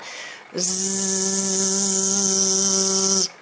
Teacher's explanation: Now this is where you can take your hand, you just very softly, gently place it on your throat, and if it's the S or the S, you're going to feel no vibration. But if it's making that Z sound, spelled S, you're going to feel your vocal cords vibrate.